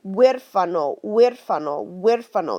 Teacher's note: H, zero sound whatsoever, okay? You literally just step over it and start your pronunciation with the next letter.